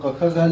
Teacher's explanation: क वर्ग का उच्चारण स्थान कंठ से